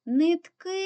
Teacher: наголос падає на останню букву тому другий склад наголошений